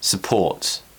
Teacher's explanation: we can also use the schwa to replace the letter U for example support support stresses on port so we're relaxing the first syllable support